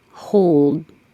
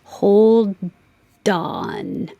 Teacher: The D releases the air, and then you hear the D sound as I get ready to make the O and on.